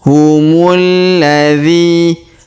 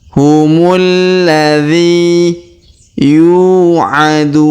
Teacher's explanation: huruf dzi kita panjangkan 2 harokat karena terdapat ya sukun di depannya.